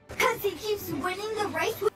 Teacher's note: the word he loses the H sound in all instances here